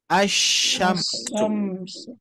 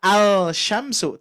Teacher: Ya, maka melewati huruf yang ini, huruf lamnya dilewati, langsung masuk ke sinnya. Ya, maka dibacanya bukan al-sya tapi asyamsu. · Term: idgham syamsiyah